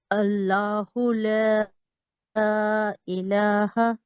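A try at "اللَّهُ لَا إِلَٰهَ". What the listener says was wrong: جی اس میں دیکھیں لا نہیں کریں گے، یہ مسٹیک ہے. لا الہ، منہ کھولیں گے.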